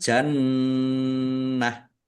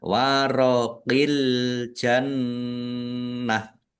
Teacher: Ditahan biar tampak mendengung. Jannah ta marbutah ya. Karena waqaf dibaca ha sukun. Wakafnya dibaca pendek karena tidak ada tanda panjangnya.